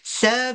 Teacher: ada lantun pada qalqalah sughra pada ba.